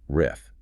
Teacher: The trickiest part of the th transition, your tongue must be between your teeth for the rith, and you have to vibrate your vocal cords. It's not a soft breathy th like in thought. It's heavy.